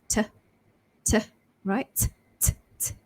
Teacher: So when you say t, you should feel a pop of air coming out of your mouth. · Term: t ending